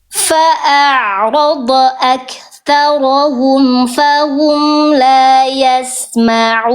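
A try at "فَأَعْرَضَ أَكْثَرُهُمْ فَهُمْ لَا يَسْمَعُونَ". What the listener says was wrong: Sedikit harokatnya keliru. Aktharu, bukan aktharo ya.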